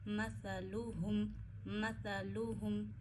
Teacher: हा को गले के आखिर से अदा करिए